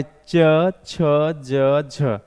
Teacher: तालव्य जो व्यंजन होता है दोस्तों वह होता है च छ ज झ